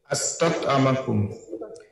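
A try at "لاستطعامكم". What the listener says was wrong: ছিল, আস্তাত ইমু লি আস্তাত ইমাকুম। জি ইস্তাত ইমা হবে, আইনের নিচে জের হবে। ইয়াস্তাত ইমু থেকে আস্তাত ইমু, কিন্তু লি আসার কারণে লি আস্তাত ইমাকুম, লি আস্তাত ইমাকুম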